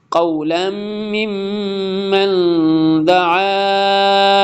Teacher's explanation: قولا تنوین کے بعد میم آ رہا ہے اور وہ یرملون میں سے ادغام یرملون ہوگا